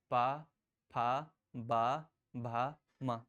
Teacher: आप जब भी पा वर्ग बोलेंगे तो दोनों होठ हमारे बंद रहेंगे। प भ म दोनों होठ बंद जरूर होंगे। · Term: ओष्ठ